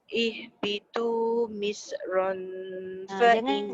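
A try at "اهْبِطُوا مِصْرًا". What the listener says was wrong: Jangan lantun Misr. Sad tu jangan. Sad tu jangan Misr. Ihbitu misran.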